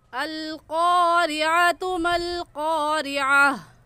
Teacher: क़ाफ मोटे हरूफ में से है, तो इसको मोटा करके पढ़ेंगे, और मोटा करने का तरीका आपके दोनों होंठ गोल हो जाए। और आइन की जगह हमज़ा नहीं पढ़ेंगे, बल्कि ये आइन है और आइन हलक के दरमियान से निकाल कर पढ़ा जाता है।